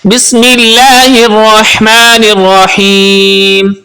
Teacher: ہا استعمال ہو رہا ہے جو کہ حلق کے درمیان والے حصے سے ادا ہوتا ہے